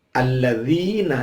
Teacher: dzi itu ada kasrah ketemu dengan ya, dibaca panjang 2 ketuk, namanya mad tabi'i